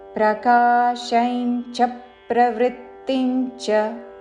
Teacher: ఈ చరణంలో అనుస్వారములు తరువాత చా అక్షరము ఉన్నది కాబట్టి అనుస్వారము ఇన్యా ఉచ్చారణ.